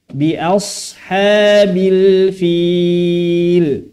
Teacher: pada lafaz sad dibaca tebal. Kemudian hamzahnya dibaca tipis.